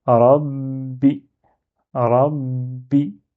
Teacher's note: au lieu de dire rabi, shedda me dit attends avant de dire bi, tu t'attardes un petit peu dessus.